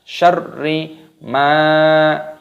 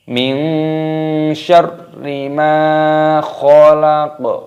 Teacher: Min syarri, tidak boleh min syarima, tidak boleh, harus ditekan. Syarri ma, mimnya berharokat fathah, ada tanda alifnya matobi'i, dipanjangkan 2 ketukan.